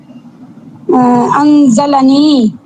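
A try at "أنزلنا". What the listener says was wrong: আগে কি ভুল হয়েছিল? সাকিন দিয়ে দিয়েছিলেন, তাই না?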